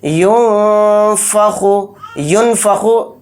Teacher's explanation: گے، یعنی نون کی آواز کو ناک میں چھپائیں گے۔ ینفخو، ینفخو ایک دم جلدی نہیں پڑھیں گے، نون کو ظاہر نہیں کرنا ہے · تو یہاں پر بھی اخفا اس طرح سے کریں گے، یعنی نون کی آواز کو ناک میں چھپائیں گے